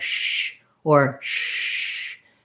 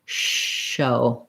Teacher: So when I'm saying show, a much wider amount of air is coming out. My lips might be a little rounded, like shh or shh.